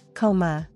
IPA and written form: ˈkoʊ mə (Coma)